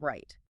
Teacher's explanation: tongue tip curls back, does not touch, and air flows centrally